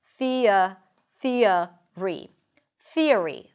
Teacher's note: And when you transition from one vowel to another, especially if the first vowel is a front high vowel, like the E, what happens is that you get an intrusive sound between those sounds. Listen, thea, it's a y sound.